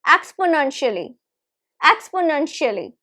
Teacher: The stress is right in the middle, third syllable. So it is stressed, we stress the nun.